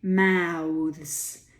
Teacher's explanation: The TH becomes voiced, slightly voiced, when you make it a plural. Mouths. And you have a voiced z as well.